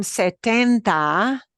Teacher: it is still a t sound but it is uh without expelling a lot of breath · in Spanish the T from setenta right that extra T that comes from siete the t's are not explosive T's